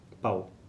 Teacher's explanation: a margem direita é o W, que representa esse U um pouco mais fraco, sabe? Essa vogal um pouco mais fraca. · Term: ditongo decrescente